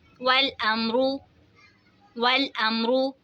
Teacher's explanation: یہاں پہ دیکھیں جی میم ساکن کے بعد با اور میم کے علاوہ کوئی بھی دوسرا حرف آ جائے تو وہاں پہ اظہار شفوی ہوگا، یعنی ہم نے میم ساکن کی آواز کو ظاہر کر کے پڑھنا ہے، کوئی غنہ نہیں ہوگا